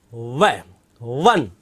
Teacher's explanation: वह को कहां से बोला जाता है, दंत और ओष्ठ से। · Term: वकार